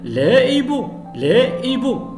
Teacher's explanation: on ne fait pas la liaison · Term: h aspiré